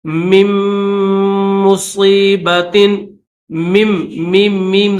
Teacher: میم مصیبت، میم میم میم زیر میم، تو میم کے بعد فوراً دوسرے میم کی آواز نکالنی ہے